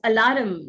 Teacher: Indians also pronounce the r sound in the spellings, and therefore pronounce words like alarm as alarm. The r is articulated.